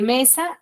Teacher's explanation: la mayor fuerza de voz de mesa es me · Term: palabras graves